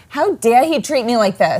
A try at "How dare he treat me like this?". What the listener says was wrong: You're doing great, but just slow yourself down.